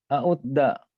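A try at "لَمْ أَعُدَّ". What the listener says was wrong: Nah, benar lam a'udda.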